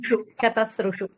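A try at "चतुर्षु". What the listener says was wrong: చతుశ్రు. ఉహు రాదు, లాస్ట్ లోపల ఉహు రాదు. చతుశ్రు చతు చతు చతు చతు, ఓకేనా? మగవాళ్ళకి వచ్చేసరికి చతుర్ అని వస్తుంది, ఆడవాళ్ళకి వచ్చేసరికి చత అని వస్తుంది. మగవాళ్ళకేమో చతుశ్రు ఉహు రాదు. చతుశ్రు చతుర్భి చతుర్భ్యః చతుర్భ్యః చతుర్నాం చతుశ్రు, ఓకేనా?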